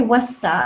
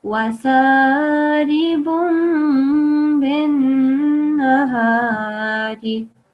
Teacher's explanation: You should actually not prolong the noon, but only prolong the ghunna sound, the noon nasal sound.